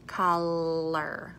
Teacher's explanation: if I say the word color, I'm doing more of a retroflex R because my tongue tip is already up for the L, color. So it just kind of flicks back.